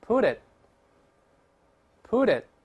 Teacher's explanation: 后面▁t，▁舌尖顶住，憋住气。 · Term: 失去爆破